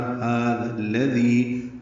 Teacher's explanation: ذال نرمی سے پڑھیں گے، ہا کو 2 حرکات لمبا کریں گے، ذی بھی یا مدہ ہے 2 حرکات لمبا کریں گے.